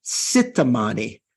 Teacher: instead of saying Chittamani Tara with a CH, one of those consonants, the Tibetans often say Sittamani.